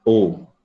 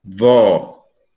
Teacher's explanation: Em U, essa vogal é alta, em O, essa vogal é baixa.